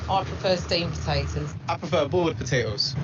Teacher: it's very difficult to say duh when it comes in between two other consonants your mouth has to do a lot of work so in many cases the d is not pronounced